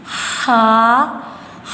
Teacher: ہا کی جو آواز ہے وہ ہم حلق کے درمیان والے حصے سے ادا کریں گے